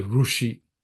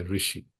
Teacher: South India, I think it's more ru, and North is ri. They'll say rushi.